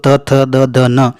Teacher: त थ द द न बिल्कुल दंतीय व्यंजन है